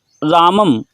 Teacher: तो रामम में जो अनुस्वार है उसका उच्चारण स्थान क्या है, तो बोलेंगे नासिका